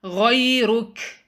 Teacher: Rather it is ghay. Then there is ra. It has dhamma. Make that ra heavy. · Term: heavy ra